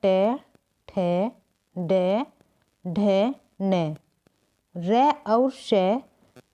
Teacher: टे ठे डे ढे ने रे और शे का उच्चारण स्थान मूर्धा होता है। इन वर्णों को मूर्धन्य कहा जाता है।